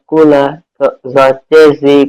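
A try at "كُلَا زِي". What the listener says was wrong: এটা কিন্তু দদ না, জ জ এবং নরম হবে। জ রে জি কুলা জি।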